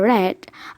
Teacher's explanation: the R sound at the beginning of red is formed with the tongue tip raised and curled back near the alveolar ridge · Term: liquid